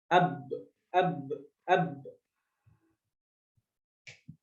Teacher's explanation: Huruf ba ini keluarnya dari dua bibir. Dua bibir secara intibak, secara tertutup rapat